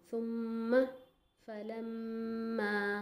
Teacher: तो गुन्ना 2 काउंट्स के लिए होता है, 2 नॉक्स के बराबर